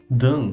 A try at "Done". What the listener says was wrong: Pronuncie também a letra N. Done.